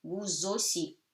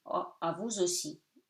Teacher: You link them together, becomes Z. So vous aussi, A-U becomes O, S-I.